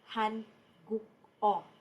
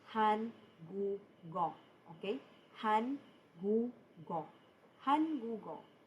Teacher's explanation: The principle behind the pronunciation, very important, is the carrying over of the batchim